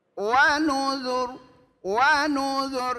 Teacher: Ketika mengucapkan huruf ro suaranya hanya sepertiga. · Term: waqaf raum